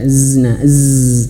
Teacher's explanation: huruf zai dia memiliki sifat ee rukhawah juga sama mengalir suara dan dia juga ee memiliki sifat khusus yaitu namanya saofir ya.